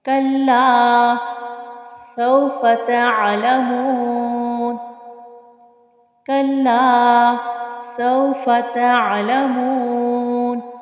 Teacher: لام الف زبر لا، کھینچ کر پڑھا اسے ہم نے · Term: الف مدہ